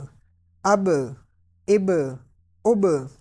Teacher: حمزہ با زبر اب، اب یہ با بھی حروف قلقلہ میں سے ہے، تو قلقلہ کی آواز آپ اینڈ پہ نکالیں گے، حروف قلقلہ کیونکہ ساکن ہے تو اس میں قلقلہ خوب ظاہر ہوگا۔ حمزہ با زبر اب، حمزہ با زیر اب، حمزہ با پیش اب، اب اب اب۔